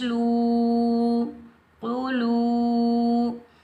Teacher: لام کے اوپر پیش، لام کو ہم واو ساکن کے ساتھ ملائیں گے، یہ واو مدہ ہے، اس کو ہم 1 الف کی مقدار میں کھینچ کر ادا کریں گے۔ یاد رکھیں واو ساکن سے پہلے جب بھی پیش آ جائے تو یہ ہوتا ہے واو مدہ، اس کو ہم 1 الف کی مقدار میں کھینچ کر ادا کریں گے۔